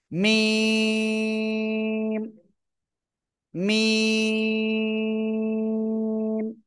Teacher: এই যে দুই ঠোঁট, দুই ঠোঁটের শুকনো জায়গা থেকে উচ্চারণ হবে